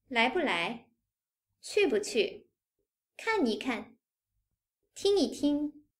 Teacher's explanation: When 不 bù and 一 yī come between reduplicated verbs, they are read as the neutral tone.